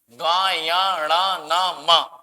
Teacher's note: इन पांचों वर्णों के बोलने में नाक की सहायता ली जा रही है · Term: नासिका